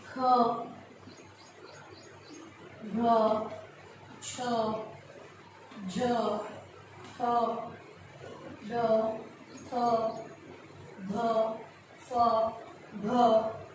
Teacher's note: जिन ध्वनियों के उच्चारण में श्वास वायु की मात्रा अधिक होती है उन्हें महाप्राण कहते हैं। क्योंकि जो प्रकार है वो यही है कि श्वास या प्राण की मात्रा के अनुसार, तो अल्प प्राण में मात्रा श्वास की या प्राण वायु की मात्रा कम होती है, जबकि जो महाप्राण है इसकी श्वास वायु की मात्रा अधिक होती है।